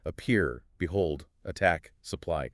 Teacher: An unstressed syllable followed by a stressed one. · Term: iamb